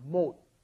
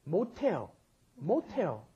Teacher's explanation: Because that S at the bottom, when pushed up against followed by an H, turns it into the aspirated sound